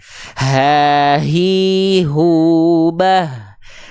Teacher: Yang tadi kita bahas itu namanya adalah hak besar. Hak besar dilafalkan dari pangkal tenggorokan, dari tenggorokan paling bawah, dan dia punya karakter nafas yang mengalir tapi karakternya biasa. Ha, hi, hu, bah.